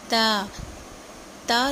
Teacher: زبان کی نوک سامنے کے جو 2 دانت ہیں ان کی جڑوں سے ٹکراتی ہے تو تا ادا ہوتا ہے